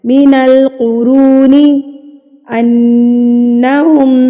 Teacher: نون کی آواز کو ایک حرکت کے برابر ناک میں روک کے رکھنا ہے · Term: غنہ